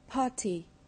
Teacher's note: Những từ dài có thể chỉ có một trọng âm, main stress, nhưng cũng có thể có một trọng âm chính và một hoặc hai trọng âm phụ, secondary stress. Ví dụ, từ party có một trọng âm chính rơi vào âm tiết thứ nhất